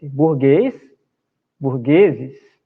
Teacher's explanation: Veja que burguês, a última sílaba é a mais forte, então ela é oxítona.